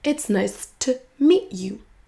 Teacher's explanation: Le to va se réduire en t.